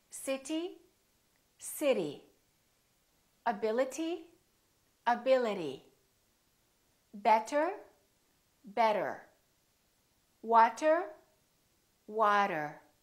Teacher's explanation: the T didn't really sound like t, t. No, it didn't. It sounded more like a d sound